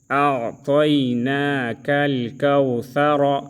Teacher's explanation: اور جب ہم وقف کریں گے تو کوثرہ کی جگہ کوثر پڑھیں گے